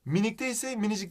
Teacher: minicik derken K ünsüzü düşüyor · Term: Ünsüz düşmesi